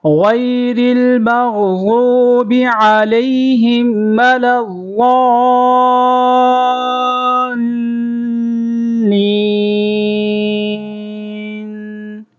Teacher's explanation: لام کو ضاد کے ساتھ ملائیں گے اور ضاد کو لام کے ساتھ ملائیں گے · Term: تشدید